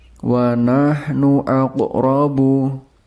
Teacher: ada qaf sukun di tengah-tengah kalimat. Ini merupakan bacaan qalqalah sughra, jadi harus dibaca memantul.